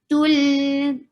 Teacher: Tul, dhamma, circle your lips well and attach with lam.